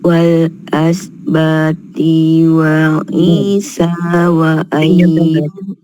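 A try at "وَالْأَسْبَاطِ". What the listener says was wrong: T-nya pendek.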